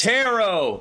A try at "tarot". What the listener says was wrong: That second T, man. You don't say it.